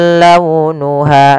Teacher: lembutkan pelafalannya dalam launuha karena ada huruf waw yang sukun didahului dengan fathah. Ha ada mad tabi'i, panjangnya 2 harokat.